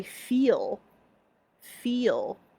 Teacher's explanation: you can tell that the L is kind of going back in your mouth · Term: the L in feel